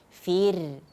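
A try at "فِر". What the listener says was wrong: Nah, itu masih tebal. Yang pertama tadi sudah bagus, sudah tipis, cuman harus sedikit getarannya. Fir.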